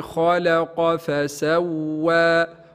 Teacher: خاء مفخمة لأنها من حروف خص ضغط قض، وهي الحروف السبعة المفخمة، لا بد من تفخيم الخاء.